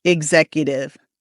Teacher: the X actually makes 2 sounds. It makes the G sound and the Z sound. So don't say X like exercise.